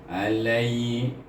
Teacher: Ya itu bertindak sebagai huruf lin, jadi kita baca lai dengan lembut